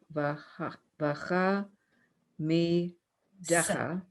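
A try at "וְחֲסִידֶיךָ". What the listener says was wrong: That's not, it's a samach.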